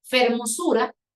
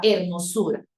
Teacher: Por ejemplo, como lo de fermosura, que cambió a hermosura, ¿no? La consonante F se aspiró hasta convertirse en una consonante H muda del español.